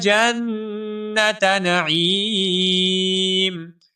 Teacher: این یدخل جنت نعیم، جنت، جیم کو نون مشدد کے ساتھ ملائیں گے، آپ کے علم میں ہے نون مشدد کے اوپر بھی ہمیشہ غنہ ہوتا ہے، یہاں پر بھی غنہ ہوگا، ٹھیک ہے؟ نعیم میں جو عین ہے اس عین کو ہم واضح کر کے پڑھیں گے اور عین کو ایک الف کے برابر لمبا کریں گے کیونکہ یہاں پر یا مدہ ہے، ٹھیک ہے؟